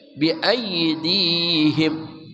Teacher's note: ay tengah lidah terangkat, Bi ay, jangan bi ay ya.